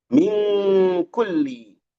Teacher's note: nun menghadapi kaf ikhfaun hakiki dibaca dengung